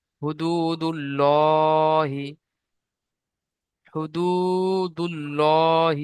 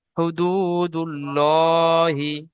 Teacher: আল্লাহর নামের আগের অক্ষরে পেশ আসার কারণে আল্লাহর নামকে পুর করে পড়তে হবে